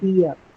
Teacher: when you have the R sound at the end of the word, it's not articulated, meaning it's not pronounced. You stop at the vowel sound just before that.